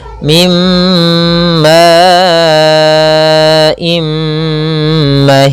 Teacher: Nah, di sini kita namakan juga idgham naqis, yaitu idgham yang tidak secara utuh hilang secara keseluruhan suara bunyi nunnya kepada huruf mim, masih menyisakan sedikit dengungan